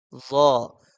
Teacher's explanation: جو زبان کی نوک ہے وہ اوپر کے دانت جس گوشت میں فٹ ہے اس گوشت کے ساتھ جا کے زبان لگے گی